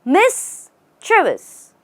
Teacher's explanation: here is where you stress Miss and say chis